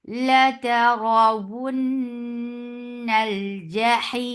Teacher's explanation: لا ترون لا I'm telling you because of this raw, you might be making lam and ta heavy. So keep lam and ta light but raw heavy.